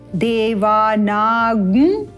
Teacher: देवानागुं का उच्चारण स्पष्ट करेंगे, गुं इस प्रकार से गुंजन करते हुए